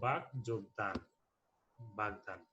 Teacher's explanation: অঘোষ অল্প প্রাণ ধ্বনি, আর এটি ঘোষ অল্প প্রাণ ধ্বনিতে রূপান্তরিত হয়েছে